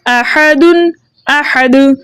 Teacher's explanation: वसल के अंदर हालत वक्फ के अंदर जब हम दाल के दो पेश की तनवीन को हज़फ करेंगे, दाल साकिन हो जाएगा, वक्फ बन जाएगा वक्फ बिल इस्कान। हालत वक्फ में भी हम दाल को जो है जुम्बिश के साथ पढ़ेंगे, क्योंकि दाल हुर्फ़े मुकलकल में से है और साकिन मौकूफ है।